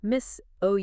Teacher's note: That s often sounds like a Z and the stress hits the second syllable.